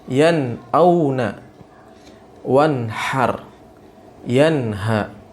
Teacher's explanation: Harus dibaca jelas huruf nun tersebut dan tidak boleh ada gunnah. Jadi huruf nunnya dibaca jelas, ya, sesuai makhrajnya, ya, tanpa ada gunnah di sana. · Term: izhar